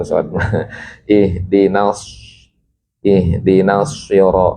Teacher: kalau sin infitah terbuka kalau shad itbaqah